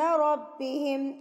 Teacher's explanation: را کے اوپر جب زبر آتی ہے تو را کے اوپر موٹا پڑا جاتا ہے